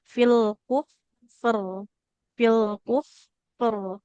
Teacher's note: huruf ro-nya berubah jadi sukun, maka dibacanya tebal karena harokat terdekatnya adalah dhammah · Ini perpaduan sifatnya antara rokhwah di huruf fa dengan huruf ro yang tawasud, aliran suara pertengahan. Jadi alirkan dulu dengan sempurna, bunyikan huruf fa-nya fil kuf.